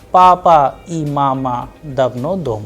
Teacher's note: It is a very simple statement simple sentence that is why the sound is flat.